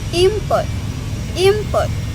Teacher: The sounds N become M because it comes from before P, which is bilabial sounds made with our butt lips, like B, P, M. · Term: regressive assimilation